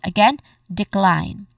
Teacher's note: Cline is the stressed syllable